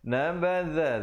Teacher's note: za di ujung lidah. Nabadha fariqum, ri menjadi nipis di situ 2 harakat.